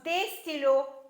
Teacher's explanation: We are not pronouncing the S